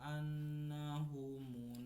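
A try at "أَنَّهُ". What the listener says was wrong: Punya masih lah annahu panjangin.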